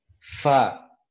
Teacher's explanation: Huruf fa itu adalah ujung gigi seri atas. Bertemu bibir bawah ya, punggung bibir bawah.